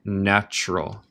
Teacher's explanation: El T suena como CH